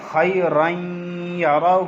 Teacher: خیرن جب ہم پڑھ رہے ہیں ناک میں غنہ کر رہے ہیں